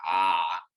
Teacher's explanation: when we have ein it's pronounced very guttural and more stronger than you would in hebrew or in modern hebrew instead of i it's ah so it's more like from the · So it's more like from the back of your throat, guttural like that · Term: ayin